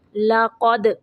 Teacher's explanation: قاف کو موٹا پڑھیں گے اور دال کو قلقلہ کریں گے